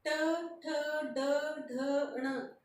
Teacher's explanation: तो जीभ कहाँ स्पर्श हो रही है, मूर्धा से, ये हो जाएंगे मूर्धन में।